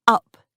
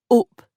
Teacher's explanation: the vowel u in words like up is pronounced up in the South and O in the North